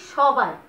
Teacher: দন্তস্বটা এখানে পুরোপুরি তালব্যস্ব হয়ে যাচ্ছে, মানে এস এইচ এর মতো উচ্চারিত হচ্ছে